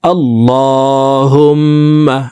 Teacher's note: আল্লাহুম্মা লাকা আল্লাহুমমালাকা আল্লাহ এলামকে মোটা করে উপরের দিকে ধাবিত করে এক আলিফ টেনে পড়ব আল্লাহুম্মা হুম এখানে ওয়াজিব গুন্নাহ তিন সেকেন্ড পরিমাণ গুন্নাহ করে পড়তে হবে